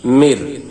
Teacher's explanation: নুনে সাকিন বা তানবিনের বামে আমরা পড়েছি ইদগমে বেলাগুন্নার হরফ আসলে ওই হরফকে তাসদিদ দিয়ে গুন্না ছাড়া পড়িতে হয়। এখানে দেখুন নুনে সাকিনের বামে র আসছে, তাই এখানে কোনো গুন্নাহ নাই। মির, এই নুনের জেরে গিয়ে মিমের জেরে গিয়ে এর তাসদিদকে ধরেছে। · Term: ইদগম বেলাগুন্নার কায়দা